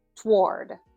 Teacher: in American English, most people pronounce this as one syllable, toward. It's almost like that first O doesn't exist. Toward. It's like a TW sound at the beginning.